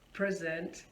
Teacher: You see, the stress is on the first syllable, and here the word present is working as a noun and also the adjective in case if someone is absent.